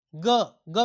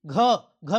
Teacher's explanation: ग में कम वायु निकली मुंह से, घ में ज़्यादा निकलती है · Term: महाप्राण